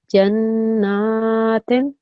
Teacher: the noon on its own you can hear 2 seconds because of the vertical fatha. So Jannah, okay, that's the shadda sound there, and then na, that's the vertical fatha sound. · Can you hear how I joined the jim with the noon? You could hear that for 2 seconds, the joining of these 2 letters, and the noon on its own you can hear 2 seconds because of the vertical fatha.